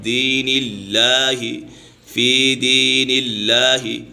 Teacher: اور یہاں پر یہ قاعدہ ہے کہ اس میں جلالت اللہ عز و جل کے لام سے پہلے اگر زیر ہو تو اس میں جلالت اللہ عز و جل کا لام باریک پڑھا جائے گا